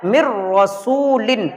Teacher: پچھلے حرف کو اگلے حرف میں بالکل ملا دینا ہے اور اس کے اندر آواز بالکل ناک میں نہیں جائے گی۔ تو ہم کو کس طریقے سے پڑھنا ہے، تو جب بھی نون ساکن کے بعد یا تنوین کے بعد را آ جائے یا لام آ جائے تو ہم کو بالکل ملا دینا ہے اور اس طریقے سے پڑھنا ہے مر رسول۔ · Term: ادغام تام